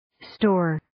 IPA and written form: stoʊr (Store)